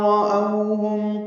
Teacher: وَإِذَا رَأَوْهُمْ راپور پڑھیں گے، او بولین ہے، ہونٹوں کو نہ تمام گول کریں گے، آگے لیں گے